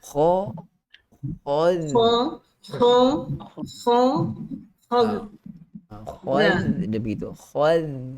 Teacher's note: Kemudian huruf zal itu hati-hatilah walaupun kita nak tebalkan huruf kha yang padanya ada sifat isti'la. Tapi jangan kita terbawa-bawa dengan tebalkan sekali huruf zal